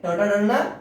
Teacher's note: ಮೂರ್ಧನ್ಯ ವರ್ಣಗಳು ನಾಲಿಗೆ ಮೇಲ್ಭಾಗದ ಅಂಗಳಿನ ಸಹಾಯದಿಂದ ಉಚ್ಚಾರ ಮಾಡ್ತಾವಂತ